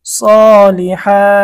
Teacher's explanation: অক্ফ করার কারণে এক আলিফ টান হবে